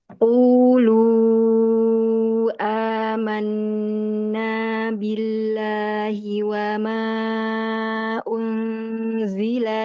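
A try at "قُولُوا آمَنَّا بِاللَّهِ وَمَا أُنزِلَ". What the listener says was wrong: gunahnya menahan ya di lidah belakang. Huruf zai bukan makhrajnya di lidah belakang sehingga tidak boleh tertahan di lidah belakang. Alirkan aja Mbak ke depan. Masih jangan terlalu diangkat lidah belakang. Agak dilepas, agak dibuka lagi mah rahang mulut, jangan terlalu rapat.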